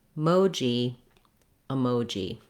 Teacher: And in this word, because the mo syllable is stressed, the letter E is actually going to sound like It's going to be a short, reduced vowel schwa. So a good way to be able to practice to get that vowel sounding correct is actually to start the word on the stress syllable, mo.